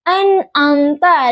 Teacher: nun makhrajnya itu di ujung lidah huruf mim makhrajnya itu di bibir. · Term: huruf nun